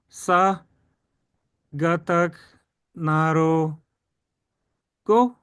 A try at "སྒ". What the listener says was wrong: But you missed the sound. What sound comes after tying these together? Sa and ka together. Sa kata ga.